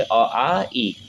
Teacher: इन स्वरों के उच्चारण के समय वायु केवल मुंह से निकलती है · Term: मौखिक स्वर